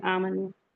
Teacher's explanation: आमनु फतह मुस्तकीमा है और वाव मद्दा है, तो टू टू काउंट पढ़ेंगे